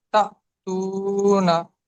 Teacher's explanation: ওয়াও মাদ্দাকে সর্বদা এক আলিফ পরিমাণ টান দিয়ে পড়তে হয়।